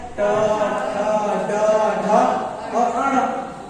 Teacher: जो है मूर्धन के सहायता से बोलते हैं, जीभ के मुड़ने के सहायता से बोलते हैं। मूर्धन्य व्यंजन वर्ण कहलाता है या मूर्धन वर्ण कहलाता है।